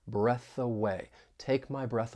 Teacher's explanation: We can link that voiceless TH in breath with the vowel sound in a way. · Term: linking